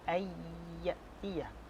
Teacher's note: Dan bacaannya adalah ayyatiya, memasukkan kepada huruf ya ketika ada nun mati berjumpa dengannya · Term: idgham ma'al gunnah